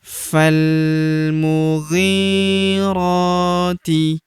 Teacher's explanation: Ini hamzah wasol atau hamzah penyambung. Huruf ghi kita panjangkan 2 harokat karena terdapat ya sukun di depannya